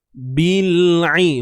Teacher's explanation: Huruf ain sempit kan, tengah kerongkong.